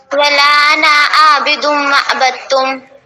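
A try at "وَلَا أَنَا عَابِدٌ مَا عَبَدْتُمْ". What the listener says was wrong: ماں کو تھوڑا سا کھینچیں، ما عبدتم، کیونکہ الف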